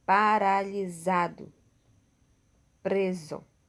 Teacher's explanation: a letra s terá o mesmo som da letra z quando estiver entre vogais